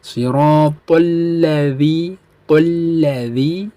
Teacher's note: Tolla di sini hukum bacaannya idgham syamsiyah atau alif lam ma'rifat syamsiyah, di mana ada alif lam ma'rifat bertemu dengan lam syiddah, di mana lam ma'rifatnya digabungkan langsung dengan lam syiddahnya